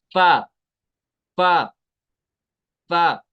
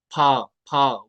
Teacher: ऊपर वाला दांत लगाएंगे निचले होंठ के साथ। बाज लोग दोनों होंठ मिलाते हैं, होंठ नहीं मिलाते हैं। · ऊपर वाले दांत लगाने हैं निचले होंठ के तर हिस्से के साथ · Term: फा का मखरज